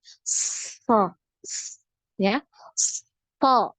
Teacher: Kemudian sifat yang lain ya dari nafas, kemarin kita selalu membahas dari aliran nafas. Ya, untuk huruf shad ini terasa ya ada aliran nafas yang ngalir ketika kita mengucapkan hurufnya.